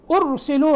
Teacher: ارسلوا را کو موٹا کریں گے